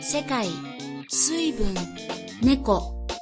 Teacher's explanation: The second pattern is atamadaka. The first mora is high, and everything else, including the attaching particle, are pronounced low. Examples of such words that fall into this category are 世界、水分、猫。